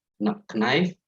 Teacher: so we do not pronounce the k at all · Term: silent k